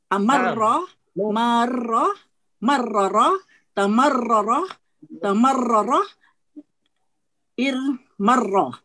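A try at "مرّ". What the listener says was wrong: Ya, mudah ya. Mudah, bagus.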